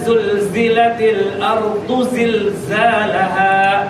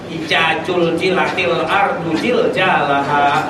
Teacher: Zal dengan zai hilang dalam bahasa logat orang Sunda, berubah menjadi jai ya, ja ya, za dengan ja.